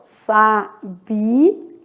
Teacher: Sabia separa, ó, hiato. São sílabas separadas.